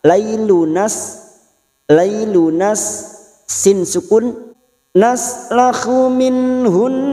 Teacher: Lailu, tanda waqaf shad lam, al waslu aulah, karena tadi kita memilih terus, maka lailunas sin sukun, naslakhu minhun, nun sukun bertemu ha, idhar halqi dibaca jelas